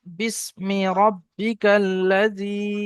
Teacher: এখানে ইয়া মাদ্দা এক আলিফ টান হবে।